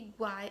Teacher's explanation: primeiro nós vamos ter uma semivogal, vogal e depois outra semivogal. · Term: tritongo